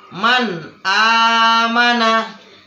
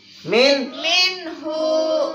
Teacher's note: Nun sukun atau nun mati bertemu dengan alif. Berarti cara membacanya harus jelas. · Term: idhar halki